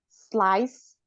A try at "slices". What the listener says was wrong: Ada S-nya di belakang.